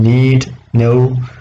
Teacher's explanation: the air will not escape through the oral cavity it will only pass through the nasal cavity therefore those sounds are called nasal sounds